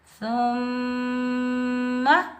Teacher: میم مشدد حروف یرملون کے مجموعے میں سے آ رہا ہے تو میم مشدد پر ہم 1 الف کی مقدار میں غنہ کریں گے اور میم مشدد کو ہم سختی اور جماؤ کے ساتھ بھی ادا کریں گے اور بغیر کھینچے پڑھیں گے۔